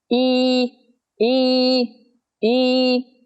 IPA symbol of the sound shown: i: